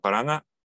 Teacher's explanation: We're gonna do a velar nasal, not a glottal stop.